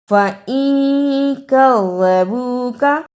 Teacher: نون ساکن کی آواز کو تھوڑی دیر ناک میں چھپا کر غنہ کرنا ہے